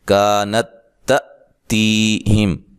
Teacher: یہاں کاف کو لمبا پڑھیں گے، الف مدہ ہے